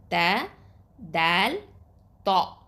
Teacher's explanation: நுனி நாவிலிருந்தும் மேல் நடுப்பற்களின் வேரிலிருந்தும் இந்த 3 எழுத்துக்கள் வெளியாகுது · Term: மஹ்ரஜ்